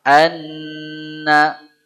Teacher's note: Anna nun tasydid itu gunnah akmal. Gunnah yang paling sempurna. Dia tertahan.